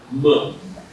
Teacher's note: It's the lip labial sound going nasal. M. So it goes through the air goes through the sinuses and creates a vibratory effect.